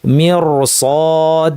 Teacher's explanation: হ্যাঁ, আগেই মির বলবো না, পরে দেখতে হবে কি আছে। মির সদ, সদ যেহেতু ভারী এই জন্য এই রটা ভারী হবে।